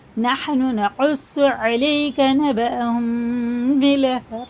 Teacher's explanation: یا ساکن سے پہلے زبر ہے تو یہ حرف لین ہے، جلدی پڑھا جائے گا، کھینچیں گے نہیں، سے مجہول آواز سے بچائیں اور جلدی پڑھیں، نرم آواز کے ساتھ جلدی ادا کریں۔